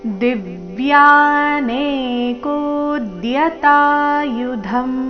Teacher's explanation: ಕೋ ದೀರ್ಘ ಹೇಳಿ ನಂತರ ಅದರ ಮೇಲೆ ಆಘಾತ